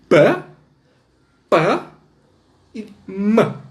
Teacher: o fonema produzido pela letra P é um fonema oclusivo bilabial